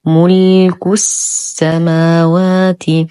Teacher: ننتقل من ضمة الكاف إلى تشديد السين، اللام شمسية مدغمة بالسين وهمزة الوصل تسقط في درج الكلام